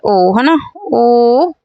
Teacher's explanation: कंठ ओष्ठ हो जाएगा, क्योंकि ओठ भी लड़ रहे हैं और कंठ से भी आवाज आ रही है।